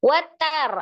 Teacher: harakat Watar ada ro sukun sebelumnya Fathah di huruf ta ya rnya dibaca dengan tebal atau tafkhim karena huruf ro sukunnya sebelumnya fathah